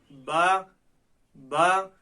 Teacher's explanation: آپ با کو ادا کریں، دیکھیں با با، تو یہ دونوں ہونٹوں کی تری کے حصے سے ادا ہوا، تو اس لیے با کا مخرج کیا ہوا؟ دونوں ہونٹوں کی تری کا حصہ